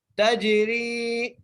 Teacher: تا کو جیم سے ملائیں گے اور جیم پر قلقلہ کریں گے اور را کو ایک الف مقدار کھینچ کے پڑھیں گے، تجری